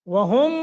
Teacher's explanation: ادغام مثلین ہے، یعنی ادغام مال غنہ، تو یہاں غنہ کریں گے